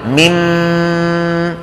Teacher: ولا ننسى الغنة المطولة